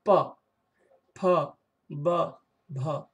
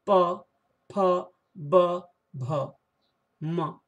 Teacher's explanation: प बोलते समय आपको दोनों ओठों को सटाना पड़ेगा। बिना ओठों को सटाए प बोल ही नहीं पाएंगे। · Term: ओष्ठ